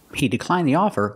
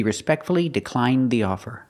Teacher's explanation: He declined the offer. The tongue goes up, makes a stop D, but it links together with the TH, so you don't really hear it.